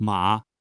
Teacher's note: pronounce the same syllable with the low dipping tone